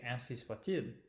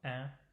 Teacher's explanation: we have that same nasal vowel, un, so it's in the nose